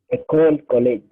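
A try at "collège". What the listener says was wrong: So you see, we don't say a sharpe, we don't say a cole, we don't say college, we don't say salade. That E at the end is silent.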